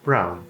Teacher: Geralmente, W, depois de vogal, ele tem som de U.